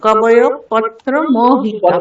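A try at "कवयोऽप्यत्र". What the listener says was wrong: পত্র নয়, প্যত্র।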